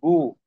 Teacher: কণ্ঠনালীর শেষ হইতে উচ্চারিত হয় 3 নাম্বার মাখরাজ গয়ন, খ।